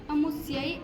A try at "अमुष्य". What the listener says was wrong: बेटे यहाँ मूर्धन्य श है।